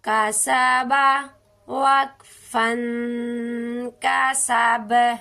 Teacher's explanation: یہ دیکھیں باب حروف قلقلہ میں شامل ہے، اس کی با پر قلقلہ ہوگا